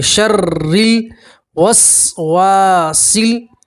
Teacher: را مشدد کے نیچے زیر ہے تو آپ کو باریک پڑھیں گے، پتلا پڑھا جائے گا